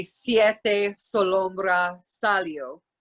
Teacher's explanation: when it's at the beginning of a word it's pronounced like a hard sibilant s